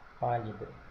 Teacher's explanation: não é a última nem a penúltima é a anti penúltima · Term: proparoxítona